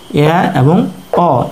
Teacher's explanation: আমাদের জিহ্বা সর্বনিম্ন অবস্থানে না থেকে কিছুটা উপরের দিকে উঠে থাকে, অর্থাৎ আমাদের মুখগহ্বরের কিছুটা অংশ ভরাট করে রাখে আর বাকি বেশিরভাগ অংশ উন্মুক্ত থাকে। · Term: অর্ধ বিবৃত স্বরধ্বনি